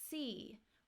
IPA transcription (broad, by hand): iː